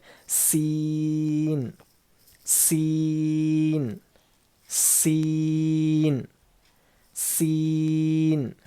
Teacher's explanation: زبان کی نوک کو سامنے کے نیچے کے 2 دانتوں، نیچے کے دانتوں کے جڑوں میں لگانے سے سین ادا ہوتا ہے. اور اس کے پڑھنے میں سی ٹی کی آواز ہوتی ہے